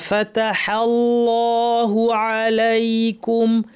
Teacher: লামটা ভারী হবে কিন্তু হা ভারি হবে না